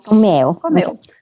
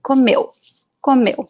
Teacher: The U here is weak, so the stress is actually the E sound.